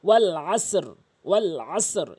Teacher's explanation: আইনটি অবশ্যই হলকের মাঝখান থেকে উচ্চারণ করবেন